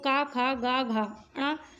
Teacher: हमारे कंठ से उच्चारित होने वाली ध्वनियाँ हैं